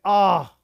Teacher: अब ओष्ठ्य, ओष्ठ्य में ये नहीं आएगा, क्योंकि ये होठ से नहीं बोलता, ये होठ से नहीं बोलता, ये तो कंठ से बोलता है